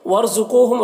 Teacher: را کو پر پڑھیں گے، قو قاف کو پر پڑھیں گے اور یہاں پر واو مدہ ہے.